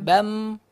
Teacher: Namun untuk bam, suaranya ditahan, bam. Udara ditahan